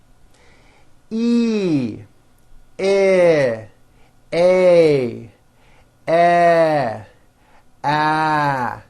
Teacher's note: Notice with each of these vowels, my jaw is opening a little bit more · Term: front vowels